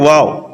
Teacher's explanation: दोनों होठों की गोलाई से अदा होता है